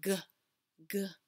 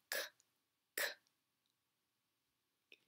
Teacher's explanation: the g sound the hard g sound you're using your voice where the k sound you're not using your voice